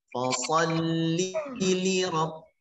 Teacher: Li-nya ada 2 dan harus dibaca dengan cepat. Li yang pertama jangan sampai tertekan. Kalau ditekan maka dia mengeluarkan bunyi panjang.